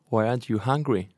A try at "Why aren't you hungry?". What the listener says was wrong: Again, one syllable. Remember the pronunciation, aren't. One syllable, aren't.